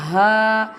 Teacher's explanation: Ha pronounced from the bottom part of throat.